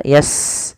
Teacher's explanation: Sin punya sifat namanya hamas, alirkan nafasnya